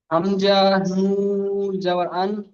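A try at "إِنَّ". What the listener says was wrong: যাবার রয়েছে দেখেন, যাবার রয়েছে। আন হবে না, হামজা নুন জের, হামজা নুন জের ইন।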